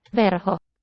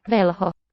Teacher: It's that trilled R at the tip of the tongue.